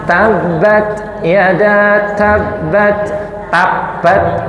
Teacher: Jadi taf itu diusahakan adalah hames.